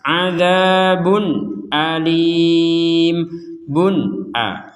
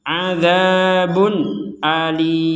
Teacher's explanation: Nah, di sini ada tanwin bertemu hamzah, maka kita membacanya dengan jelas